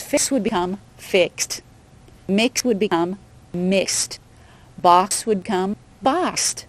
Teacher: So when you say mix or fix, you're actually saying KS at the end. So the end sound would be what? S. S is voiceless. · S is voiceless. So in the past tense, fix would become fixed.